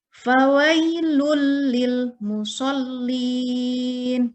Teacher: Cara membacanya memasukkan tanpa berdengung. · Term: idgham bila gunnah